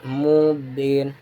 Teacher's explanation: Ini terjadi karena huruf mad ya bertemu dengan sukun di akhir ayat, dibaca panjang selama 2, 4 atau 6 harokat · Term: mad arid lisukun